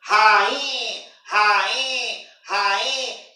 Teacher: Portanto, a letra N está nasalizando rainha, rainha, rainha. Está nasalizando essa segunda vogal, esse I da palavra rainha.